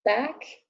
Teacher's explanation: it's a front vowel lips are spread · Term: ash